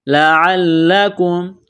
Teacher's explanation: اس لام کو دبائیں گے، تشدید کی وجہ سے سختی کریں گے